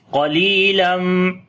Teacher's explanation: qaf we read in heavy sound, lam we long due to ya madda.